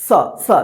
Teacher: जीभ जो है ना दोनों दांत के बीच में आता है तब इसका उच्चारण होता है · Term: दंत स